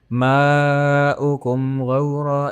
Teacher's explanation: یہ مد متصل ہے، ایک ہی ورڈ میں مد کے بعد حمزہ آ رہا ہے تو ہم اس کو 4-5 حرکات تک کھینچتے ہیں